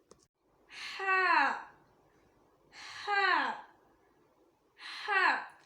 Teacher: இது middle of the throat, அதாவது தொண்டையின் நடு பாகத்திலிருந்து வரும்.